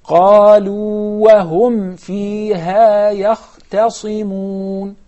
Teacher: So I prolong the first waw in order to explain there are two waws and separate between both of them.